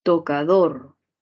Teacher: última sílaba con mayor fuerza de voz palabra aguda